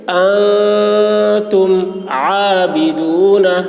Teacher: اخفا ہوگا، آواز ناک میں لے جا کر چھپائیں گے. جیسے انتم عابدون، عین کو حلق سے ادا کریں گے.